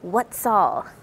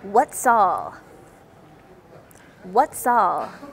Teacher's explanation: For what's all, the S connects with the A, what's all. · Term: liaison